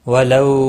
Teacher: واولین ہے، تھوڑا نرمی کے ساتھ کھینچ کر ادا کریں گے